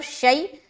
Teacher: آگے شیئن، یہاں پر شیء، شین یا زبر، شیء، یا لین ہوگا، یہاں پر دیکھیے یا ساکن، اس سے پہلے زبر آ گیا، یا لین نرمی کے ساتھ جلد ادا کریں گے